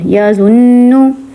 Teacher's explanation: ناک میں آواز گئی اور زبان آپ کی تالو کے ساتھ ٹچ ہوگی اوپر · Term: غنہ